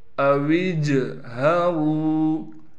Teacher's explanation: را کو موٹا بھی پڑھنا ہے اور را کے بعد واو مدہ ہونے کی وجہ سے را کو ایک الف کی مقدار کھینچیں گے · واو کو جیم سے ملانا ہے، واو کے بعد الف موجود ہے لیکن یہ جب ہم واو کو جیم سے ملائیں گے الف ختم ہو جائے گی